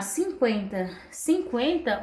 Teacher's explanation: o U eu falo ele de forma fraca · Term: semivogal